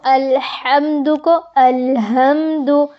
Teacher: ہا کو ہا میں بدلنا، یعنی حروف کے مخارج کی تبدیلی۔ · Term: لحن جلی